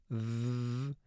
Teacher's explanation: the voiced sound for th that's the sound where the vocal chord vibrates when you make that sound